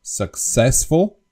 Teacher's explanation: the English word successful has the accent on the second syllable, successful, but the Slovak people tend to make a mistake and they would say successful, because the accent, they would put the accent on the first syllable. · the English word successful successful has the accent on the second syllable